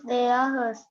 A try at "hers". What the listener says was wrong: Hers. Nice pronunciation.